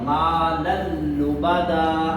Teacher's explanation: یہ ادغام ہوگا مگر غنہ نہیں ہوگا کیونکہ تنوین کے بعد لام ہے اور لام پر غنہ نہیں ہوتا.